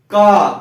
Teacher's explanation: और उसके बाद देखिए का, चाहे गा बोलिए, चाहे घा बोलिए, चाहे अंगा बोलिए, बीच में और कहीं जीवा टच नहीं हो रही है दांत पे, ना कहीं, केवल कंठ पे। देखिए कंठ पे आवाज रुकती है, उसके बाद सीधा बाहर, तो कंठ हो गया।